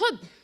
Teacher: حب یعنی یہ ہا اور با 2 حروف سے مل کے بنا ہے، اور اگر ان دونوں حروف کا مخرج یعنی جہاں سے یہ پرناؤنس کیے جاتے ہیں اگر اس پہ غور کریں گے تو پتہ چلتا ہے کہ ہا حلق کے آخری حصے سے اور با لپس کے آؤٹر موسٹ ایریا سے ادا ہوتا ہے